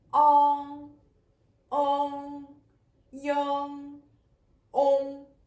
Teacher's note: Et quand on prononce voyelle nasale postérieure, la forme de la langue est un peu comme ça. L'arrière de la langue monte pour que l'air sorte par nez.